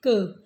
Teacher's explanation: क की ध्वनि निकालेंगे तो क के बाद अ निकलता है और अ स्वर है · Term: व्यंजन